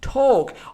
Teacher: So it's not talk, but it has to be pronounced like talk without the L sound. So don't pronounce the L sound.